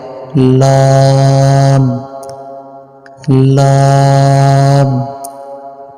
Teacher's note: জিহ্বার আগার কিনারা সামনের উপরের দাঁতের মাড়ির সঙ্গে লাগাইয়া উচ্চারিত হয়